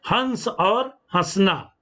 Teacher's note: अनुस्वार के उच्चारण में वायु नाक से निकलती जबकि अनुनासिक के उच्चारण के समय वाले नाग और मोड दोनों